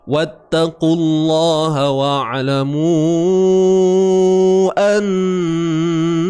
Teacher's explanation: Mu panjang 4 atau 5 harakat. Kalau sambung. Kalau berhenti 2 harakat lah. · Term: mat jaiz